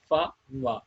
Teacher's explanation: upper teeth to the lower lip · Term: labiodentals